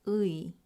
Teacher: 의 is a combination of two Korean vowels, ư and 이. Together, they form the sound 의.